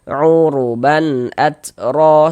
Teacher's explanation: jangan dibaca ban dipanjangkan begitu, jangan salah. Pendek saja.